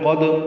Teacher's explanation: دال ساکن پہ قلقلہ ہے